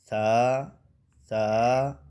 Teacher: اور جو سا ہے زبان کی نوک اوپر کے سامنے والے ثنایا اولیہ کی نوک کو جا کے لگتی ہے، پھر یہ سا ادا ہوتا ہے.